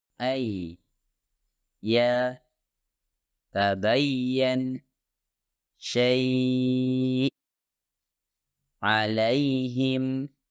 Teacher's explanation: ya ghairul maddiyah diucapkan dari bagian tengah lidah yang terangkat ke arah langit-langit keras tapi intinya ya dihasilkan dengan posisi sedikit di belakang huruf syin